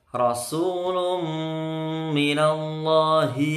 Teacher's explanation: roknya tebal, rok fathah itu tebal